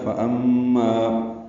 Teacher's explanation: فَأَمَّا میم مشدد پہ غنہ ہے، ما الف مدہ کے بعد حمزہ آنے کی وجہ سے مد منفصل ہے.